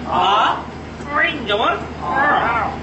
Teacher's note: আইন উচ্চারিত হচ্ছে এটি কন্ঠের মাঝখান থেকে এবং উচ্চারণ করার সময় কন্ঠটাকে একটু চিপা ধরতে হবে